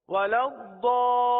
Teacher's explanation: مد عارض کا، اور مد عارض کو 3 الف تک کھینچ کر پڑھیں گے